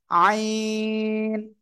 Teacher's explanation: হলকের বা গলার মধ্যখান থেকে এ অক্ষরটা গলাটা চেপে উচ্চারণ হবে, আইন, চার আলিফ টান।